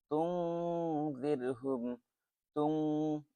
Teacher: এখানে গুন্না হবে, ইখফা গুন্না, নুন সাকিনের পরে জাল আসছে।